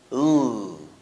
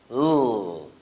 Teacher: It's called lateral because the tip of the tongue is placed on the alveolar ridge, and air escapes through the mouth laterally along both sides of the tongue. Again, that's lateral sounds and L.